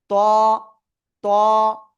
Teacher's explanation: জিহ্বার আগা উপরে 2 দাঁতের গোড়ায় লাগান, লাগিয়ে একটু মোটা আওয়াজ করতে হবে, কিন্তু মোটা আওয়াজ করতে হবে, না হলে কিন্তু হবে না।